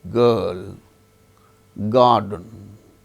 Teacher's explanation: But when it is followed by a consonant sound, it is not uttered, as in case of certain, garden, girl, GIRL, girl. R is followed by L, a consonant sound. There R is not pronounced.